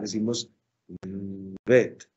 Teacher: Cuando en cambio está ausente, es decir, el dagesh lene no se encuentra, deberíamos pronunciar esa consonante de manera aspirada. En este caso nosotros la volvemos labio dental, decimos vet.